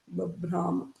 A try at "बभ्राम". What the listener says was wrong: You are saying Babbram, it's Babbrama, not Imma.